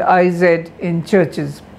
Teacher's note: Because churches ends in the sound ch. Ch triggers the choice of the IZ allomorph of the English nominal plural morpheme.